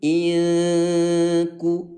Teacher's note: Coba suara N ubah menjadi suara L gitu ya. Miringkan suara N-nya. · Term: bacaan ikhfa